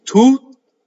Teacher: So you don't do two T's, you just go up to the T and then you stop.